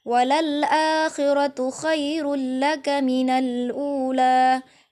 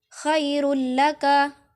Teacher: Sehingga pengertian dari idgham bila gunnah adalah memasukkan atau mentasydidkan huruf dan membacanya dengan tidak boleh menggunakan dengung. Hukum bacaan tersebut berlaku jika nun atau tanwin bertemu huruf lam dan ra.